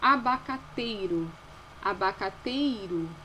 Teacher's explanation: o E aí está pronunciado de forma mais forte, representa a vogal. O I de uma forma mais fraca. Então, ela é uma semivogal que está acompanhando ali a vogal na sílaba. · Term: ditongo decrescente